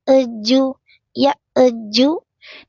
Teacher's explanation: hamzahnya tenggorokan bawah ya tertahan napas tertahan suara